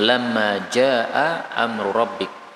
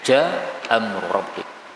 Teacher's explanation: Hamzah ketemu Hamzah Boleh dihapus satu hamzahnya menjadi ja Amrik kemudian amrbik ro ketemu ro ini boleh Idam